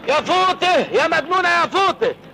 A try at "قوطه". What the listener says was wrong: فوطه ايه يا ابني؟ اسمها قوطه مش فوطه. لكن هنا اسمها قوطه.